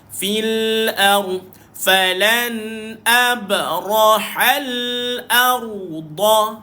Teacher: Sebab apa ra muncul? Sebab huruf sebelumnya baris di atas, maka dibaca dengan tafkhim pada ra.